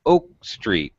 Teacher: oak much higher pitch street much lower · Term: not compound noun pitch pattern